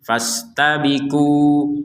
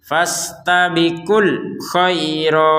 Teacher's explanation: Jadi kalau berhenti fastabiku, kalau digabungkan maka panjang dari kunya ini hilang menjadi fastabikul khairat.